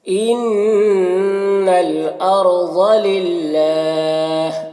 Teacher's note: ان الارض، را کو پر پڑھیں گے، ضاد کو بھی پر پڑھیں گے، حرف مستعلیہ میں سے. للہ، اللہ کلام سے پہلے لام کے نیچے زیر ہے تو اللہ کلام کو باریک پڑھیں گے، اور وقف کریں گے تو مد عارض وقفی ہوگا، تو اس طرح سے پڑھیں گے.